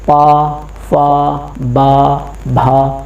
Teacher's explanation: जब हमारे होठ आपस में मिलेंगे तो वो क्या कहलाएगी? औष्ठ ध्वनि